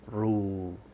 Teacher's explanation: So remember that when you pronounce the ra, even if there's a vowel after it, you'll make the ra bold, but you won't make the waw bold